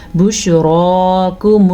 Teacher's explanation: را کو پر پڑھنا ہے را پہ کھڑی زبر ہے